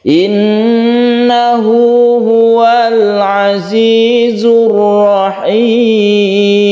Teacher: Tasydid nun disebut gunnah musyaddadah, kita dengungkan di sini. Kemudian ada hak dhamir yang kita panjangkan satu alif, ini namanya mad silah qasirah.